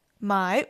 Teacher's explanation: The first sentence says I buy weed. My with the third tone is the verb to buy.